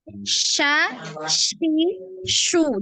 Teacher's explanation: Bukan sin ya, tapi shin, tengah lidah. Tengah lidahnya naik ke langit-langit.